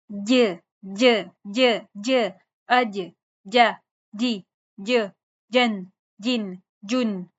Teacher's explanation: जुबान का दरमियानी हिस्सा ऊपर टच करेंगे तो सही मखरज निकलेगा।